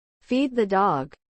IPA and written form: fi:d ðə dɔg (Feed the dog)